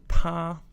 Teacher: And yes, the non-gender pronoun is also pronounced ta first tone.